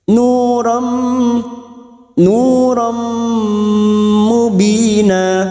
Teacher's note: Nu duma diikuti waw sukun 2 harokat. Ram fathah tanwin atau fathatain bertemu mim idgham bi gunnah. Siap masuk dan mendengung, masuk pada huruf mim dan mendengung selama 2 atau 3 harokat.